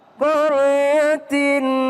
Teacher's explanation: Tanwin ketemu dengan ha. Jangan berdengung. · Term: Izhar